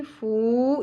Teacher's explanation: वाव हरफ मद्दा है, पेश के साथ ऐड अप होके इक्वल टू 1 अलिफ के बराबर आपको इसका साउंड मिलेगा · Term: वाव मद्दा